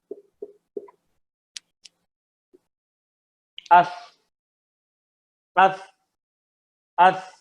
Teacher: سا کی ساؤنڈ ختم ہو گئی ہے، کچھ ہوا باقی ہے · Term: ہمس